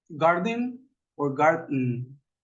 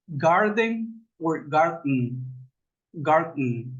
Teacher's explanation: Usted hace una pausa después de esa D y en lugar de pronunciar la E, coloca la N.